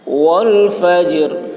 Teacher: جیم قلقلہ اور را باریک ہوگی. ٹھہرتے وقت یہاں پر وقف کرتے وقت را کی آواز نکلے گی.